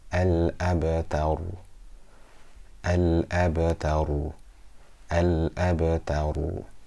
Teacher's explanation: There's a ba within a word with a sukoon on it. So we do small qalqalah.